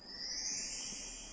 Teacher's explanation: the CH sound in back of the throat is one of the hardest sounds we have in the German language